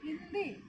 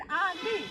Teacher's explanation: हिंदी नाक पर लग रहा है, मुंह का उतना बल नहीं लग रहा है, लेकिन आंधी, मुंह खुल रहा है